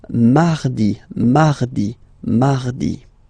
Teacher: So you can hear that you don't pronounce it that strongly, this R.